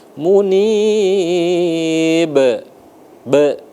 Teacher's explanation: Nah, di abdim munib itu baru qalqalah kubra karena dia di akhir baru besar dia ya.